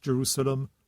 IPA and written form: dʒəˈruː.sə.ləm (Jerusalem)